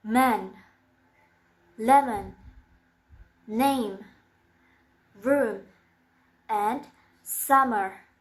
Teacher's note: It sounds Again, It's voiced, and the place of articulation is bilabial. The manner of articulation is nasal.